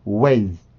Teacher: 음절 끝으로 왔기 때문에 유성음이라고 하더라도 성대 울림이 없습니다. 성대 울림이 없이 순수한 공기만으로 만들어주는데 유성음보다는 무성음이 항상 세죠. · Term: Z 발음